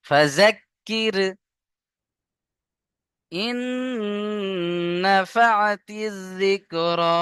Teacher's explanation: ইন গুন্না করবেন, নুন তাসদীদ অজিব গুন্না